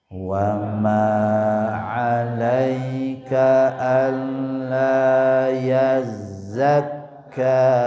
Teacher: Alla lamnya bertasydid sempurnakan ditekan lnya dua harakat. Yazzakka kembali sempurnakan huruf zai bertasydid dan kaf bertasydid ya.